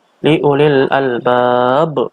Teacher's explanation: bacaan qolqolah kubro artinya dipantulkan dengan tebal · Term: qalqalah kubro